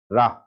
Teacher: कंपित व्यंजन, कंपन उत्पन्न हो जाता है, रा। बोल कर देखो वजनदारी से तना, रा।